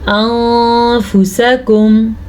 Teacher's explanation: نون ساکن کے بعد فا ہے، غنہ بھی کرنا ہے اور چھپانا بھی ہے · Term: اخفا